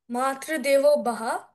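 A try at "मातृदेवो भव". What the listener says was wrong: It's not Baha, it is Bhava. V for Virat at the end, okay?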